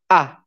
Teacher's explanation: You always have to make the A sound in your mouth. You make it by making your mouth wider and your tongue more to the back of your mouth.